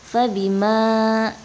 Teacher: ini disebut dengan mad tabi'i, dibacanya 2 harokat atau 2 ketukan